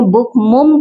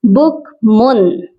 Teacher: آپ نے منہ کو بند کر کے مم نہیں کرنا بلکہ نون کے مخرج کے ساتھ ٹچ کرنا ہے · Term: نون کی آواز